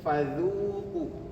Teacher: fa ini makhrajnya gigi atas. bertemu dengan bibir bawah